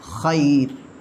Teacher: اسی طرح خیرن بھی لے لیں، ایک اور مثال خیرن، آگے وقفہ آ جاتا ہے تو وقف میں خیر پڑھا جائے گا، خیر. را ساکن سے پہلے یا ساکن ہے، باریک پڑھا جائے گا